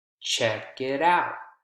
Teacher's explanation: Usually it's going to be the last word that's stressed in a prepositional phrase like check it out.